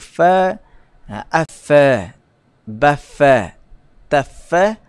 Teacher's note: Jadi bila kita sebut fa, afa, bafa, tafa, kita dapat rasakan gigi kita memang menggigit perut bibir bawah · Apabila kita menyebut huruf fa, automatik gigi atas kita menggigit perut bibir bawah. Mestilah hujung gigi itu dia menyentuh pada perut bibir.